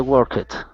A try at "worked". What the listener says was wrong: Okay, now this is going to be worked. Okay, instead of work it, the E is silent, so we say worked.